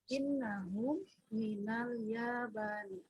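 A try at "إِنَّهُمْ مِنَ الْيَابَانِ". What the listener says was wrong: Ayo, ahsanti, innahum minal yabani.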